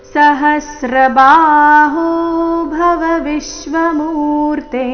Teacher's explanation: ವಿಶ್ವ ವಿ ಮೇಲೆ ಆಘಾತ ಮೂರ್ತೆ ಎರಡು ಅಕ್ಷರ ದೀರ್ಘ